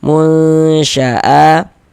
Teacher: A ini dibaca panjang, namanya adalah mad badal. Karena ini A ini huruf hamzah.